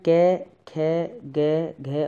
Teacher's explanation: कंठ में क ख ग घ और ड आते हैं